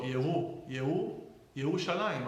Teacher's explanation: don't really hear much of a resh in between the yud and the shin and the vav.